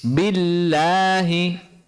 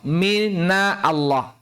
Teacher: Minallah, maka kita baca tebal. Tapi pada lafal billahi sebelumnya berharakat kasrah, sehingga lafzul jalalah kita baca tipis.